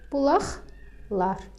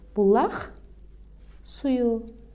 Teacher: Sözün sonu q ilə bitdi. Özündən sonra samit gəldi. Deməli, q x kimi tələffüz olunacaq. Olacaq bulaqlar.